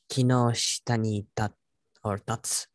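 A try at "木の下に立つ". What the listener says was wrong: Yes.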